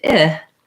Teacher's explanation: clearly because they're very extreme whereas the e to it if my tongue is a little bit lower um it's not quite as tense it's not quite as far forward